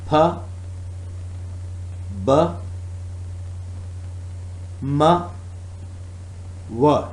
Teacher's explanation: Bilabial classification, articulators, upper lip and lower lip.